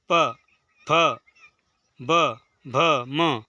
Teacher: इनका उच्चारण स्थान ओष्ठ या ओठ है, तो इनको ओष्ठ की सहायता से यानी कि आपके होठों की सहायता से बोला जाता है।